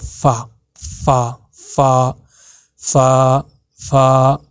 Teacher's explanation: فا کو جب ادا کرو گے تو آپ کے جو اوپر کے دانت ہیں وہ آپ کے ٹچ ہونے چاہیے آپ کے جو لپس ہیں نیچے والے اس کے ساتھ